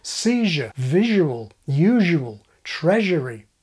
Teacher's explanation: Z and yod coalesce to form postalveolar J